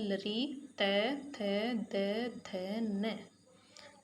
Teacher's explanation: तो यहाँ पर जो हमारे दांत हैं यहाँ ये वर्ण इस स्थान पे हमारे दांतों को जीभ टच कर रही है, इसीलिए इनको दंते वर्ण कहा जाता है, यानी दांतों से उच्चारित होने वाले